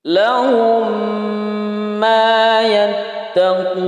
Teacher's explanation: Mim idgham misli atau disebut dengan idgham mimi dipanjangkan 2 harokat atau 1 alif